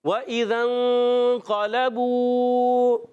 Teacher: واو کی ادائیگی ہوگی ہونٹوں کی گولائی سے. وَإِذَا حمزہ کو خوب واضح کریں گے، ذال کو نون سے ملانا ہے.